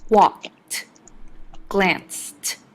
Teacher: In walked and glanced, the ed makes a t sound.